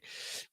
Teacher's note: That was a great shift of pitch between miss several, miss several. That drop in pitch very helpful, very natural sounding.